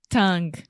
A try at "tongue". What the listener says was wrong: So do you see what you're saying? You're saying on. So you are nasalizing a sound when nasalization does not take place. You can apply this to almost all words that have an N in English.